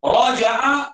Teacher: Raja'a, ra dibaca tebal. Sebab ra itu bagi atas. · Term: tafkhimur ra